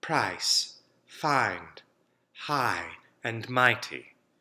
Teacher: in RP it's going to move towards a as the second part of the diphthong